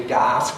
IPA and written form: gaːs (gas)